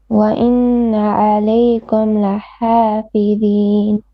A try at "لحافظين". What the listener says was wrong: The, ضين, make it a bit heavy. You have to work on your the.